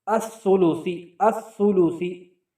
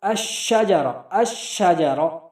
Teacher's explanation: اس میں آپ دیکھیں سب میں لام موجود ہے، لیکن اس کے بعد حروف شمسیہ آ گیا، اس لیے وہ کیا ہو گیا؟ مدغم ہو گیا، غائب ہو گیا۔